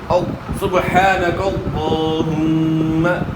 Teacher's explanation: پیش کو اپنے معروف ادا کرنا ہے, مجہول نہیں پڑھنا